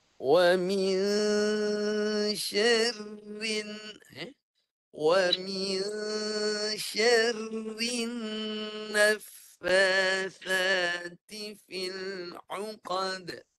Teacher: Yang ketiga huruf fa dimatikan dengan sifat hamas. Nafas jangan tak jelas nafasnya. Jelaskan nafas dan kemudian baris di atas.